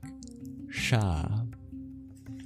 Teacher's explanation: And then we have the retroflex sibilant with a dot under it. You make that by curling your tongue back